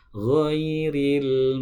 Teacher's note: Suara huruf ghinnya dialirkan, bukan dipantulkan